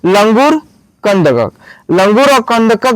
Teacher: ऊपर ऐसी बिंदु है तो इसको हम बोलेंगे अनुस्वार और इसका उच्चारण नाक से होता है